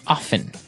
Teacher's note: They kind of leave out the strong T sound.